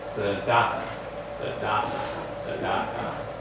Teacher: So the last syllable is going to get the accent there, right? And most of the time in Hebrew, the last syllable gets the accent.